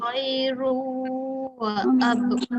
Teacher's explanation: Khairun. Jadi bila kita sebut rung tu mulut kita dah mula moncong untuk waw. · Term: dengung